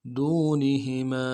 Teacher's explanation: دال کو واو کے ساتھ ملانا ہے، واو مدہ ایک الف مدار میں کھینچیں گے ، نون کو نون سے ادا کریں گے، ہا کو بھی